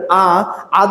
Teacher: আ যখন উচ্চারণ করছেন জিহ্বা একদম ফ্ল্যাট হয়ে নিচে নেমে গেছে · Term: নিম্ন স্বরধ্বনি